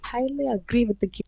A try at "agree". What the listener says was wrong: This might be because of the distance of the microphone to your mouth, but the stress sounds almost too stressed. Like I'm hearing agree instead of like agree, and also the non-stressed syllable. So the in the agree, the first syllable, because it's unstressed. The vowels should be realized differently.